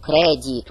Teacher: кредит, ударение на первый слог